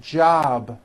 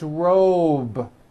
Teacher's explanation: a voiced sound job it's not J with an unvoiced P keep the voicing going throughout the whole word job with a voiced B ending